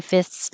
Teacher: Sometimes we don't make a good th like fifths. We can skip it and say fifths, but this one we can't skip it.